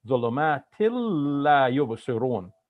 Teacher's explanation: So like the N has converted into an L. So now we have 2 L's in our pronunciation and no N at the end there. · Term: eliding the noon